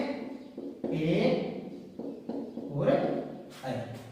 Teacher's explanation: ए ऐ का उच्चारण स्थान है कंठ तालु।